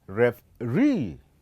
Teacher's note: So the last syllable, it is the one that will be heard louder comparing to the other. And so we call this as a stressed syllable.